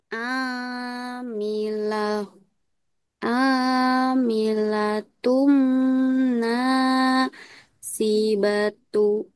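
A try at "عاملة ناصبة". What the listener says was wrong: Kalau dia tak marbuta di akhir, maka dia bunyinya hak sukun. Dan ini bukan tung, kakak, tapi tun. Tun, karena ini nun. Nun bertasdid. Tun, shibah. Tun, bukan tung. Kalau huruf mim yang ini baru tung.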